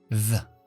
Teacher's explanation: La E no es E, se pronuncia como la schwa, porque esta palabra no se acentúa. Y las sílabas no acentuadas suelen llevar el sonido schwa. · Activamos la voz. Y la TH soplando con la lengua fuera. The. La E no es E, se pronuncia como la schwa, porque esta palabra no se acentúa.